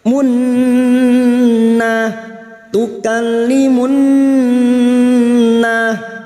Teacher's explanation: fokus pada huruf nun yang bertasdid mendengung selama 3 harokat. Munna tukallimunna na fathah diikuti alif 2 harokat.